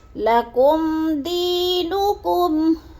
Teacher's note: لَكُمْ، اب میم ساکن کے بعد دال آ گیا تو ادھر کیا ہے، اظہار شفی غنہ نہیں کریں گے، لفظ کو ظاہر کر کے پڑھیں گے. جیسے لَكُمْ دِينُكُمْ، دی کو تھوڑا سامنے لمبا کرنا ہے، یا مدہ ہے.